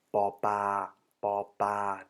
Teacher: they basically swallow or do not pronounce the L in between. So ba ba is the same as ba bla, just so you know.